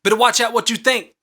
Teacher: The first stress is BET and unstressed is ter watch and then OUT is stressed and then what you is unstressed and then THINK is stressed. · There is three stressed syllables that are separated between two unstressed syllables in between them.